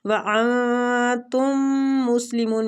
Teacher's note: وانتم مسلمون میم مشدد ہے، غنہ کریں گے۔